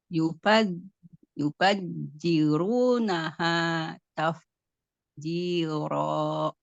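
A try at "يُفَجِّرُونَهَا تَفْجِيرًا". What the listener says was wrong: Tadi soalnya jimnya tadi kayak huruf zai. Bacanya kayak Z dari Yufat ziru. Enggak, harus Yufat jiru. Harus nanti Yufat jiru.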